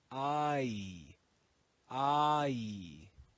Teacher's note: would be read as e but in Modern English this changes the long e changes to I I it's actually a double sound which is called a diphthong